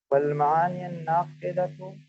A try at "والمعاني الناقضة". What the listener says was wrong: اس کو پڑھیں، اس کو، یہ آخر میں کیا پڑھنا ہے؟ والمعانی یا کے اوپر کچھ پڑھنا ہے؟ کسرہ کیوں پڑھیں گے؟